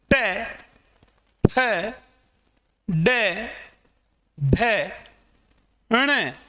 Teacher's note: आगे की हम बात करें तो आगे की पंक्ति ट, ठ, ड, ढ, ण, इन्हें मूर्धन्य व्यंजन कहा जाता है क्योंकि इनका उच्चारण मूर्धा, वाक्यंत्र में एक स्थान है जिसे मूर्धा कहा जाता है, वहां से इसका उच्चारण होता है, इसीलिए ट, ठ, ड, ढ, ण को मूर्धन्य व्यंजन कहा जाता है।